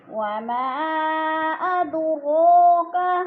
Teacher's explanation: اد پہ قلقلہ ہو رہا ہے, دال کو ہلا کر پڑھیں گے, قلقلہ ہے, قلقلہ کا معنی ہوتا ہے لفظ کو ہلا کر پڑھنا, جنبش دینا.